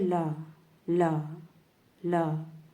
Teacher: जीभ हमारी तालु को छू रही है लेकिन हवा मुख के दोनों तरफ से बाहर निकल रही है · मुख के दोनों बगल में से हवा बाहर निकल जाए, तो ऐसे व्यंजन को हम पार्श्विक व्यंजन भी कहते हैं